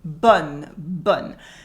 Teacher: So we say the N here. Bonne. The O is open.